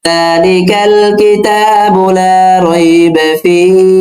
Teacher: যেহেতু আবার এখানে ওয়াকফ হচ্ছে, মাদের হরফের পরে আবার ওয়াকফ হলে সেটা আবার মাদ্দে আরজি হয়ে যায়, আর মাদ্দে আরজি হলে 3 আলিফ টেনে পড়তে হয়। তো সেই প্রেক্ষাপটে আমরা এখানে 3 আলিফ টেনে ওয়াকফ করব।